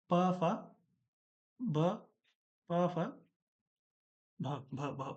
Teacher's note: ओष्ठ मतलब होठ से बोला जाना चाहिए